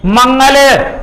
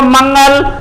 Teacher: जैसे कि आप यूज करें मंगल, तो आप अगर प्रैक्टिस के तौर पर आप बोलकर देखोगे तो आपको ऐसा लगेगा ध्वनि जैसे नाक से निकली हो। और आप देख भी सकते हो मंगल, तो इस तरीके से आपको आवाज लगेगी जैसे आप नाक में से निकल रही हो। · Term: अनुनासिक वर्ण